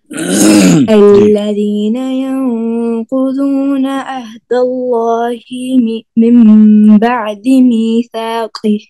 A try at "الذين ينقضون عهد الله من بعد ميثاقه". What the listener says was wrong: عين کو کلیئر کریں. الذين ينقضون عهد الله من بعد ميثاقه. ميثاقه.